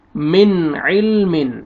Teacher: اس لفظ میں نون ساکن کے بعد حروف حلقی میں سے عین آ رہا ہے تو یہاں پہ اظہار کریں گے